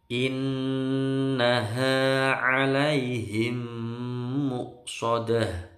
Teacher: nun bertasydid, dengung lama. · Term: bacaan gunnah